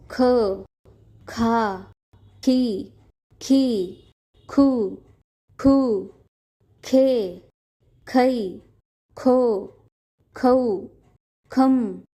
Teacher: ख का उच्चारण भी आपको गले से करना है